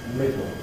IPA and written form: ˈmɪdo (middle)